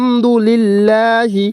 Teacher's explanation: জেনে রাখতে হবে যে এখানে আল্লাহ শব্দের ডানে এখানে জের রয়েছে জের থাকলে বারিক তথা পাতলা লা করিয়ে পড়তে হবে